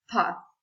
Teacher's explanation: the tip of the tongue makes contact with the upper teeth which block the flow of air